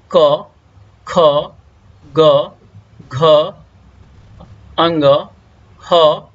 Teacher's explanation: इस सभी लेटर्स का उच्चारण स्थान कंठ है। इंग्लिश में इसे कहा जाता है गटरल।